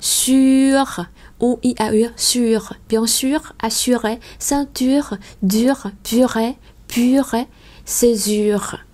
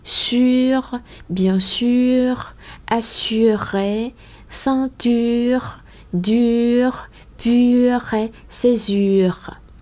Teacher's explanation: Nếu mà đọc chữ u trong tiếng Pháp là u, miệng của mình nó dần như là chúm chím lại, và nó chỉ còn khi các bạn lấy ngón tay của bạn ấn vào cái môi dưới và nó chỉ còn đúng chỗ mà chúng ta ấn cái tay vào.